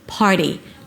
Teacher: Pop the P, put a little H after, par, the T becomes a D.